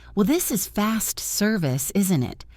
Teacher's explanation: Do not say it happily. Say it with a bit of a tired, flat voice. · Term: sarcastic tone